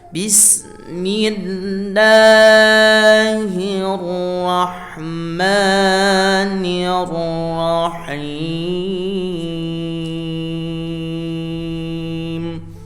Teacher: Mad tabi'i atau panjang 2 harokat atau dinamakan mad asli, panjangnya harus setara, tidak boleh beda-beda.